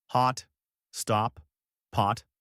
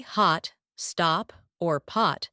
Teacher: When I say those words, hot, stop, pot, my jaw is really relaxed and open and the sound is pretty long